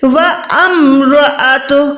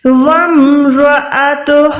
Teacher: یہاں پر واو کو آپ نے ڈائریکٹ میم ساکنہ کے ساتھ ملانا ہے